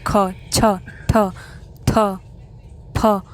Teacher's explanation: इनको बोलने में आपको ज़्यादा फोर्स लगाना पड़ रहा है और साउंड बाहर की तरफ आ रही है और हवा भी बाहर निकल रही है फोर्स के साथ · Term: महाप्राण